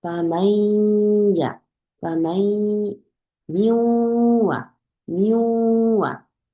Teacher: 왜냐면 콧소리 줄여면 시간이 걸리거든요. 그래서 콧소리가 싹 퍼지고 난 뒤에 야로 넘어가셔야 돼요. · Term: 군나